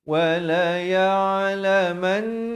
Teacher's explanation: ain di pertengahan kerongkong